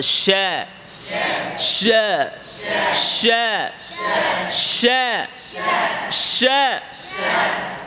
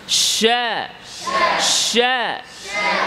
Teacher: শিন তাফাশি, আওয়াজ ছড়বে, ইন্তিশারুস সাউত, আওয়াজটাকে ছড়াতে হবে। শা শা, শক্ত না আবার এরকম শক্ত না, হ্যাঁ।